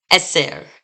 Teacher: we're going to put the stress on that second to last syllable because of these segels.